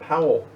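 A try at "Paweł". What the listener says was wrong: Pavel. I think they pronounce it W's like a V, like Pavel.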